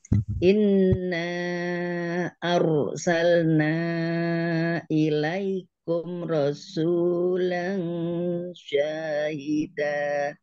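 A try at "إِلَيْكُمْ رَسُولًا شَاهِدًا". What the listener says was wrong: Tadi kumnya jangan loncat. Ilaikum rasulan syahida. tadi loncat. Kumro langsung ilaikum ro gitu. Jangan ilaikum rasulan, tapi ilaikum rasulan kumro gitu. Jadi sampai bibirnya benar-benar dirapatkan. Tapi bukan ini ya, bukan ditahan. Karena dia izhar safawi ya. Baca jelas.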